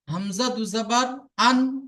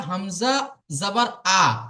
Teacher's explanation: তাহলে হামজা দুই জবর আন আওয়াজটা কোথায় যাচ্ছে নাকের মধ্যে যাচ্ছে